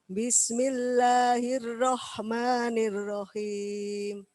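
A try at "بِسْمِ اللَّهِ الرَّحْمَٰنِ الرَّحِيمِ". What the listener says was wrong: Rahnya dapat, himnya yang tidak dapat. Belum dapat. Himnya.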